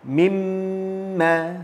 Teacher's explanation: Kalau mim pula, makhrajnya di hujung bibir, 2 bibir kita ni. Kena tutup bila kita mematikannya.